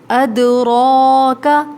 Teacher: دال ساکن ہے تو آواز پلٹ کر آئے گی، وما ادراک، را کے اوپر کھڑا زبر ہے، موٹا پڑھیں گے، کاف کو باریک پڑھیں گے